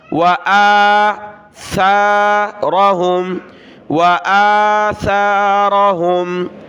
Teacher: یہ سا ہے، اس پر سیٹی کی آواز نہیں آنی چاہیے، سین نہیں پڑھنا. حمزہ کو کھینچا اوپر ایک الف کی مقدار.